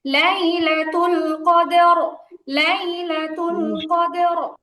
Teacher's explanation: প্রথমে কলকলা হবে, দেন হচ্ছে রটা মোটা হবে।